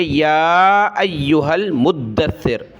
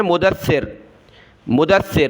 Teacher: آگے میم کو دال کے ساتھ ملائیں گے، دال کو سا کے ساتھ، تو یہاں دال اور سا دونوں کے اوپر یہ تشدید ہے تو دونوں کو جمع کر سختی کے ساتھ پڑھنا ہے۔ بہت سارے اس میں کیا غلطی کرتے ہیں، اس کو پڑھتے ہیں مدثر، مدثر یعنی دال کو سخت نہیں کرتے، سا کو سخت کرتے ہیں، مدثر کہا جاتا ہے اس کو، لیکن اس طرح صحیح نہیں ہے۔